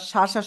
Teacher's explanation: শিন অক্ষরটা শা শা শব্দ করে আমরা 3 আলিফ টেনে উচ্চারণ করব।